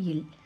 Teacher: மேல்வாய் பல்லின் அடியை நாவின் ஓரங்கள் தடித்து நெருங்குவதால் பிறக்கும் மெய்யெழுத்து